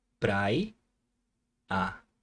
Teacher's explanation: na primeira sílaba, você consegue notar aqui o som do A e o som do I